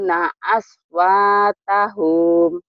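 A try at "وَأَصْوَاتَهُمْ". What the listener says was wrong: Tahum. Pendek.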